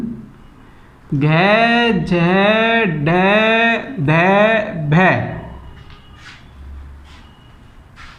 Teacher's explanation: सघोष का मतलब घर्षण खाते हुए और महाप्राण का मतलब अधिक मात्रा में बाहर निकलने वाली हवा। जो फेफड़ों से हवा निकलती है इनको बोलने पर वो घर्षण खाते हुए अधिक मात्रा में बाहर निकलती है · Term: सघोष महाप्राण व्यंजन